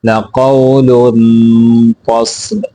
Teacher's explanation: غنہ پورا کرنا ہے، قاف کو موٹا کرنا ہے، صاد کو بھی موٹا کر کے پڑھنا ہے